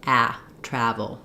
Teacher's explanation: the a vowel is an open front vowel the back of my tongue is lifted my jaws fairly open and the resonance is in the front of my mouth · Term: ah vowel